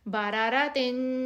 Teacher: کیونکہ آگے جیم ہے اس لیے ہم اس کو پراپر غنہ دے کر پڑھیں گے